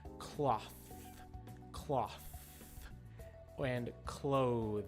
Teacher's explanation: the sound is a little bit different cloth cloth and clothes notice that with the th in each uh in each word my tongue went between my teeth that is the secret for getting a strong th sound the